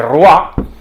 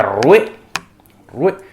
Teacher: lo que en francés se escribe oi es un diptongo que ahora decimos waa · en el dialecto francés de París se dice Roa pero en el resto de dialectos franceses se decía rue